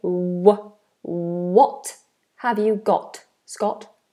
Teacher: make sure we have a nice rounded w